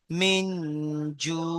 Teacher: মাদ্দে আরজি অকফি হয়ে যাচ্ছে, হরফে মাদের পরে থামছি, তাই এখানে কি হচ্ছে, মাদ্দে আরজি অকফি। 3 থেকে 4 আলিফ পরিমাণ টান দিতে হয়